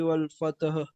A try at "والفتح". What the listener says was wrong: والفتح. इसको वल फतहा नहीं बोलेंगे. वल फतह.